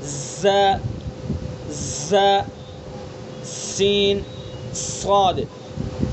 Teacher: یعنی ان حرفوں کو ادا کرتے وقت تیز سیٹی کی طرح تیز آواز نکالنا. تو جب ہم ان حروف کو ادا کریں گے تو اس طرح سے ادا کریں گے کہ ان کے اندر سے سیٹی کی آواز نکالیں گے. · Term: حروف صفیر